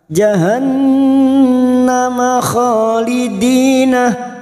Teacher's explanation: Riqa jahannun yang bertasdid gunna musaddada kita dengungkan selama 3 harakat